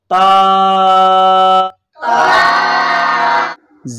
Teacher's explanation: زبان کی نوک کو اوپر سامنے والے دانتوں کی جڑ کے ساتھ ملانے سے تا ادا ہوگی